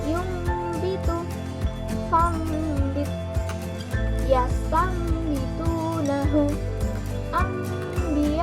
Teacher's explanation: Cara membacanya adalah membalik atau menukar atau mengganti, seperti ada huruf mim di depan huruf ba, seperti ada mimnya kayak gitu. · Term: iklab